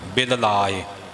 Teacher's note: ਬਿਲ ਲਾਏ ਦੋਵੇਂ ਲੱਲੇ ਅੱਖਰ ਪੂਰੇ ਪੂਰੇ ਬੋਲਣੇ, ਬਿਲ ਲਾਏ ਕਰਕੇ ਪਾਠ ਨਹੀਂ ਬੋਲਣਾ, ਬਿਲ ਲਾਏ।